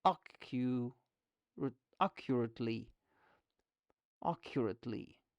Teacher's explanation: The first syllable is stressed.